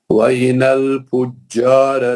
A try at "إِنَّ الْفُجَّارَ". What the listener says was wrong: نون پہ گننا ہے.